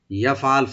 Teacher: ফাটাকে সাকিনটাকে একটু ধরে রাখতে হবে, ইয়াফে যেন কলকলা না হয়